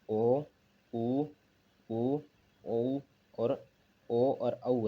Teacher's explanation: तो सबसे पहले ओष्ठाकृति के आधार पर वृत्तमुखी स्वर, होठों का आकार इसमें हो जाता है गोलाकार। और इसमें है ओ, उ, औ और ओ और औ है।